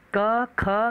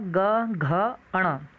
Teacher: क और ख अघोष व्यंजन है, ग, घ, अण ये सघोष व्यंजन है